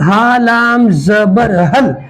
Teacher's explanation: ہم ہا لام زبر ہل, ہا نکالیں گے چھاتی سے, یہاں سے گلے کے نیچے کے حصے سے ہا نکالا جائے گا. ہا لام زبر ہل, حمزہ زبر ا, ہل ا, تا کھڑا زبر تا, ہل اتا, کاف زبر کا, ہل اتا کا, ہل اتا کا.